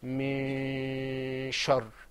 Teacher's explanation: And the reason is because we have that sheen sound coming up after it. That sheen sound meant that we should silence that noon.